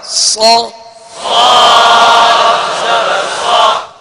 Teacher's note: اس کو پر پڑھیں گے مگر ہونٹوں کو گول نہیں کریں گے، یعنی زبر اور زیر میں.